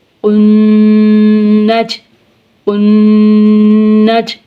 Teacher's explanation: زبر نج، قنج، قنج، قاف کو موٹا کر کے پڑھیں گے، نون مشدد پہ گنہ ہوگا